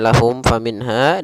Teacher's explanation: kita hukumi dengan bacaan namanya izhar syafawi di sini cara membacanya suara mimnya harus dibaca dengan jelas dan tidak boleh ditahan